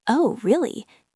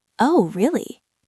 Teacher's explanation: Notice how the voice goes down on oh and then scoops up on the word really.